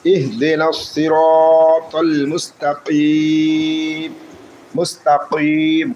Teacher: যখন আমরা থামবো তখন এখানে মধ্যে আরজি হবে, 3 আলিফ টান হবে, কিন্তু এই জবরটা বাদ যাবে